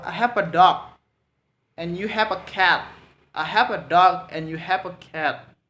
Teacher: intonation lower, go higher, and lower again, and go to higher again, and last lower again.